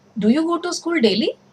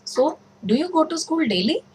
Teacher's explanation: it's a question, so you are using a rising tone here, your tone is actually rising here.